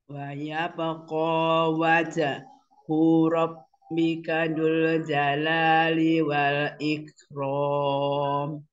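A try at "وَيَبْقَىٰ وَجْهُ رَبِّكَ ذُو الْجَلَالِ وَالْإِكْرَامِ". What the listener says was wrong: Ya, bagus. Tinggal jangan apa, jangan berhenti gitu. Wajahu robbika langsung ya.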